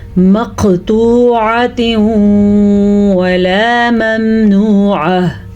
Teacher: نون تنوین کے بعد واو آیا تو ہم نے یہاں پہ ملانے کے ساتھ ساتھ غنہ بھی کیا ہے. اب اگر ہم یہاں پہ وقف کریں گے تو گول تا ہا بن جائے گی، اور اگر وقف نہیں کریں گے تو ادغام بالغنہ بن جائے گا، کیونکہ یہ ہے نون تنوین اور یہ ہے یا میم واو، نون میں سے واو.